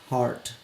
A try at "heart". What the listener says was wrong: Yeah, the way you said heart, I was like, oh, Hurt? It's the accent for me. It's the accent for me. Not hurt, but hurt. It's the same word.